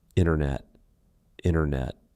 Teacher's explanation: Usually, if the T comes after an N, we drop that T and we do not pronounce it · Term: silent T